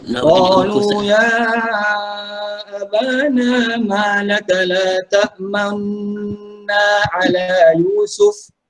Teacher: Ishmam ini adalah bacaan yang memuncungkan kedua bibir.